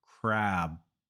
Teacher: There's no difference, but the only difference is the length of the vowel. So when you want to say crab, make the vowel longer.